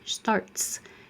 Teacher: T is voiceless. Your voice is off. Leave it off. You have a S.